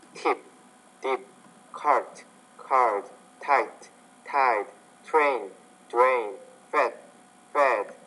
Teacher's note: Because the D is a voiced consonant, and the vowel which precedes it should be longer